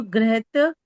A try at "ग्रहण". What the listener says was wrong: ये ग्रह ग्रह प्लस क्षत्रिय ग्रहणत, के नीचे ण भी लगा हुआ है, ग्रहण